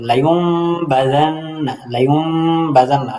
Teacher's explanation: ২ number সূরা হলো ইখফাউল মিম ফিল বাই। বায়ের মধ্যে মিমকে লুকায়িত পড়তে হবে। লাইউম বাযান্না।